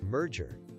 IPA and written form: ˈmɜːrdʒər (Merger)